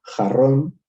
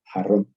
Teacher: ustedes lo pronuncian con una J mucho más suave, con lo que se llama el alófono aspirado.